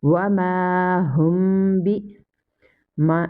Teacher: After mim sakina, here comes ba. That's mean here is ikhfa shafawi and we will read with gunna.